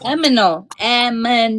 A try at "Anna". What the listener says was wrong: There is an N in there. as in Nancy. N. A-N-N-A.